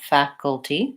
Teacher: First syllable stress and short, long and short